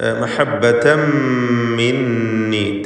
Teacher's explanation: തൻവീനിനെ പൂർണ്ണമായും മീമിലേക്ക് ലയിപ്പിച്ച് ഇദ്ഗാം ബിഗുന്ന കാമിൽ ചെയ്ത് മണിക്കുക. മിന്നി നൂൻ മുശദ്ദദയെയും മണിക്കുക.